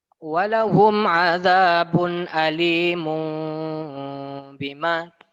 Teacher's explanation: Itu kan tanwin dia ya. Tanwin bertemu dengan ba menjadi bunyi huruf mim. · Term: iklab